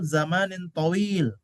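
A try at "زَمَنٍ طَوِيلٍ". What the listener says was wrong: طويل. Jangan dipanjangkan.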